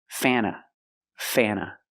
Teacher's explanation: Use the short A sound. Before the N, it changes a little bit. It becomes a little more nasal in your nose.